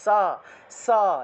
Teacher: দাঁতের মধ্যে এসে বাতাসটা ধাক্কা লাগবে তাহলে সা এই যে দেখুন স উচ্চারণ করলে বাতাসটা এসে দাঁতে ধাক্কা লাগছে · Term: দন্তস্য